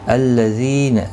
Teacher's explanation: تجوید کے ساتھ شروع کرتے ہیں. الذین ذی یا مدہ ہے، ایک الف کی مقدار کے برابر کھینچ کر پڑھیں گے. قالو قاف اور الف دونوں پر پڑھے جائیں گے.